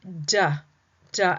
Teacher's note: many times we will add this extra a or the schwa